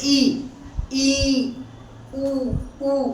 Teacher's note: संवृत स्वर कहते हैं। जैसे इ उमे आपका मुंह क्या है? कम खुल रहा है। बिल्कुल नाम मात्र का खुल रहा है।